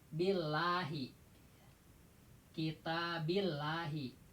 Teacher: Tarkik. Tipis ke arah a.